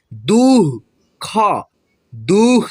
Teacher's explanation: द के आगे होगा दो विसर्ग, और इसको हम लोग ह के रूप में उच्चारण करते हैं